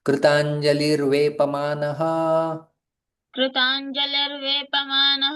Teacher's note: विसर्ग यहां का जो है वह रेफ में परिवर्तन हो जाता है। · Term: संधि